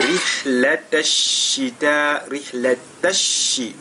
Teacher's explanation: Et la lettre Ra, elle est lue avec At-Tarqiq parce qu'elle porte la kasra.